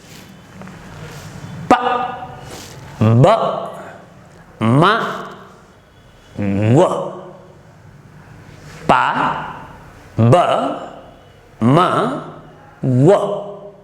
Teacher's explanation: All these four are pronounced by using both our lips. Therefore, these four consonants are called bilabial consonants.